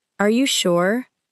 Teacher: A gentle rising tone may sound like a normal request for confirmation.